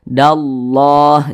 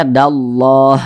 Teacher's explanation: maka lafaz Allah dibaca tebal